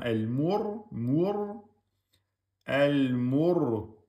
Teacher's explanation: Le ra, soukoun, on a dit quand il est précédé de la damma, il devient emphatique.